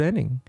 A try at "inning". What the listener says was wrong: Are you saying inning? It's inning. I-itch-I. Not E. Inning. Say I. Itch. I. Inning.